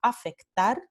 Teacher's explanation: El primer alófono va a ser el alófono fiel y como siempre el alófono fiel comparte las mismas características que el fonema. Entonces el alófono fiel es fricativo sordo labiodental